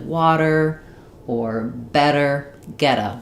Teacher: We connect to the vowel sound and we make a flap T there.